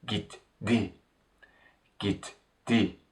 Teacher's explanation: Since t at the end of the verb stem is an unvoiced consonant, d at the beginning of the tense suffix, which is a voiced consonant, turns into its unvoiced counterpart, and what we say becomes gitti. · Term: consonant mutation